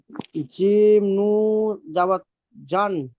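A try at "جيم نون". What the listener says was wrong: জিম নু নয়, জিন নুন। নুনটা উচ্চারণ করতে হবে ভাই।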